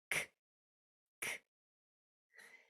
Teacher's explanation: Only air, no voice. The sound for K is k, k.